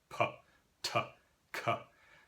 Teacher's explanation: One of the most common types of lenition is that a stop consonant, so it's a consonant made by stopping airflow through your mouth